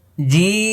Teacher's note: জিব্বার মধ্যখান উপরে তালুর সঙ্গে লেগে যাচ্ছে। এটা ছয় নম্বর মাখরাজ।